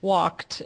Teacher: walked has an ed ending, but it sounds like a T